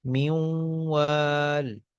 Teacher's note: میوں وال، نون کا واؤ میں ادغام ہو رہا ہے، ینمو والا قاعدہ جو ہے، تو نون کا واؤ میں ادغام ہو رہا ہے، اور نون کی صفت غنہ جو ہے وہ باقی ہے